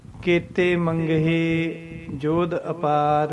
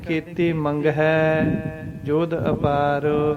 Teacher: ਸਿਹਾਰੀ ਦੀ ਸੌਂਡ ਹੇ ਹੁੰਦੀ ਹੈ, ਸਿਹਾਰੀ ਦੀ ਸੌਂਡ ਹੈ ਨਹੀਂ ਹੁੰਦੀ ਗੀ। ਕਿਉਂਕਿ ਇਕਲਾਂ ਦੀ ਸੌਂਡ ਦਿੰਦੀ ਹੈ ਸਿਹਾਰੀ।